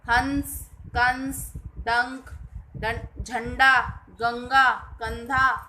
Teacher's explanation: इसे अनुस्वर कहते हैं। इसका उच्चारण नाक से होता है। इसका चिन्ह होता है, ये देखिए, हंस, कंस, डंक, झंडा, गंगा, कंधा आदि।